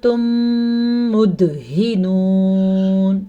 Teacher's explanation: وہ قاعدہ اس طریقے سے ہوتا ہے کہ جب کبھی میم ساکن کے بعد میم متحرک آ جائے تو ان کو آپس میں مدغم یعنی کہ ملا دیتے ہیں اور غنہ بھی کرتے ہیں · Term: ادغام شفوی